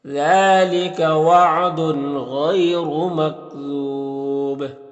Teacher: وقف کریں گے تو پھر مد عارض وقفی ہوگا اور با میں قلقلہ ہوگا